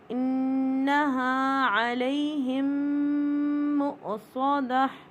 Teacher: میم ساکن کے بعد میم مشدد آ رہا ہے تو یہ میم ساکن کا رول ہے ادغام شفوی، فل ادغام کریں گے